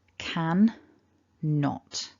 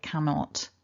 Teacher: in typical conversation you're going to hear cannot as if there's one n